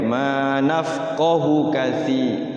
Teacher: Nafqahu itu biasanya panjang ya, mad silah qasiroh ya. Nah di sini nafqahunya pendek. Hu itu rata-rata panjang.